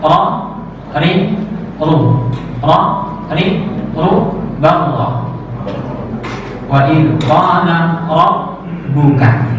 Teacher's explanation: Irti'adu ra'sul lisan. Bergetarnya ujung lidah. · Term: takrir